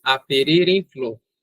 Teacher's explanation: Nós engolimos, nós não pronunciamos esse A e juntamos esse R com o EM. Quando isso acontece, nós temos uma elisão.